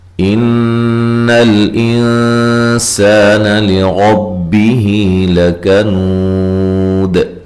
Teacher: نون مشدد پہ غنہ ضروری ہے، لام کو ہلانا نہیں ہے۔ یہاں نون ساکن کا اخفا ہے، سا، سین کو باریک سیٹی سے اور الف مدہ ہے۔